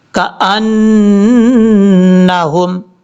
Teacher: نون کے اوپر شد ہونے کی وجہ سے غنہ ہے، یہاں پر ایک الف کی مقدار غنہ کریں گے